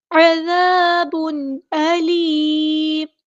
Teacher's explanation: عین کو وسطی حلق یعنی مڈل تھروٹ سے ادا کریں گے